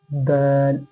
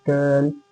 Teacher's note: دونوں دانتوں کے بیچ میں زبان کو پھنسائیے اور زبان کو تھوڑا موٹا کر کے رکھیے. دال، آواز کو تھوڑی موٹے کر کے نکالیے.